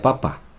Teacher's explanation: la P, os he puesto, que está en bilabial, sordo y oclusiva.